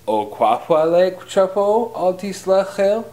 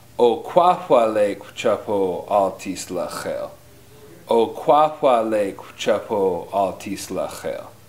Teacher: Notice the inflection going up. You want to say it with a downward inflection.